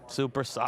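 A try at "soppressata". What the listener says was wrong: Soprasata is how you would. But it's not supersata. It's soprasata. Right? You want to roll that R. Soprasata.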